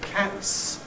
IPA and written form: kæts (cat's)